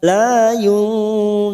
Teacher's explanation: nun sukun bertemu qaf, ikhfa hakiki. Ikhfa hakiki kita samarkan 2 atau 3 harokat.